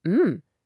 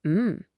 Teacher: A rising Mhm. means, Wait, what did you say? But a falling Mhm. means, Yep, you're exactly right.